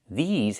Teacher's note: The pronunciation these has the long e like green beans and the z sound like in zebra with vibration.